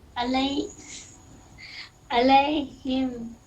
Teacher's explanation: عین حلق سے نکلتا ہے